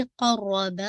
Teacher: तो आवाज़ चलती रहेगी क़र्रबा, रॉ को हेवी रखिएगा और रॉ को आपने ट्वाइस पढ़ना है क्योंकि शद है। बा इसमें 2 काउंट पढ़ना है, यहाँ पे गलती हो सकती है।